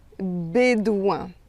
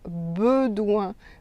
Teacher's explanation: vous devez dire « et ». Et c'est un « e » fermé, ça s'appelle « fermé ».